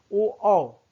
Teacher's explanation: कंठोष्ठ जिसका उच्चारण कंठ और ओष्ठ से होता है ओ औ, 2 ही वर्ण है, इसको कहेंगे कंठोष्ठ वर्ण।